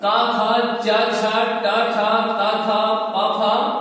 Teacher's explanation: ये 13 वर्ण क्या है? अघोष है।